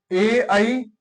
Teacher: तालू और कंठ दोनों के प्रयत्न से बोले जाते हैं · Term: तालू कंठी